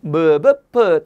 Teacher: 무는요 양입술이죠. 무 하면 어떻게 됩니까? 입술이 붙었다가 떨어지죠. 그래서 입술 모양을 본떠서 무가 되는 거죠.